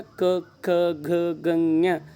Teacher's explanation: ಕಂಠ ಭಾಗದಲ್ಲಿ ನಾವೇನು ಗಂಟಲು ಅಂತ ಕರಿತೀವಲ್ಲ, ಈ ಗಂಟಲು ಭಾಗದಲ್ಲಿ ಉತ್ಪತ್ತಿಯಾಗುವ ಅಥವಾ ಹುಟ್ಟುವ ಅಕ್ಷರಗಳನ್ನು ನಾವು ಕಂಠಾಕ್ಷರಗಳು ಅಂತೇಳಿ ಕರಿತೀವಿ. ಈ ಕಂಠಾಕ್ಷರಗಳು ಕ ವರ್ಗಾಕ್ಷರಗಳು.